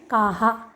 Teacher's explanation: अब यहाँ पर भी आ के बाद विसर्ग आता है, तब वैसा उच्चारण करने पर गलत हो जाएगा। आ के बाद विसर्ग आए तो उच्चारण करना है काहा, न कि काह। काह उच्चारण गलत है।